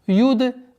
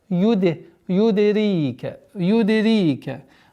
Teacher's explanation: Калкала мягкая, даль относится к одним из 5 букв взрывных.